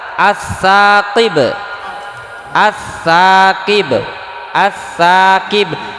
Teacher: alif lamnya ada dalam tulisannya tapi bunyinya tidak ada, disebut alif lam idgham ya.